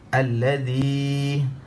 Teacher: Alladzi, za dia lembut sebagaimana yang saya ajar. Huruf zal disebut dalam keadaan lidah dikeluarkan sedikit daripada dua gigi, dan sebutannya agak lembut.